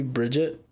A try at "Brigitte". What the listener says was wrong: Bridget has a D.